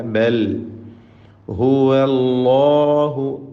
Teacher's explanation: അല്ലാഹു എന്ന ഇസ്മുൽ ജലാല തഫ്ഖീം ചെയ്തുകൊണ്ട് ലാമിനെ ഉച്ചരിക്കണം, ആ ലാമിൻ്റെ ദീർഘമായ അലിഫിനെയും